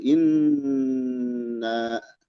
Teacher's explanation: Nah, ini ada gunnah ya. Dia dibaca mendengung dan ditahan.